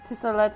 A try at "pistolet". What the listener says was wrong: I believe it's pistolet. In French, you wouldn't pronounce that T at the end, right?